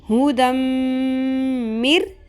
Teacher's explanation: میم کے اوپر تشدید ہے تو ہم یہاں پہ غنہ بھی کریں گے، آواز کو ناک میں ٹھہرائیں گے، لمبا کریں گے